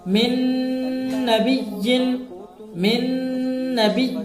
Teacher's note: کس طرح دیکھیے، من نبی، من نبی، نون ساکن کے بعد حرف ادغام میں سے نون آیا ہے، نون ساکن کو نون سے ملا کر غنہ کے ساتھ پڑھیں گے